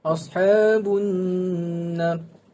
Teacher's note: nun syaddah iaitu wajibul gunnah, dibaca dengan kadar 2 harakat iaitu dan didengungkan.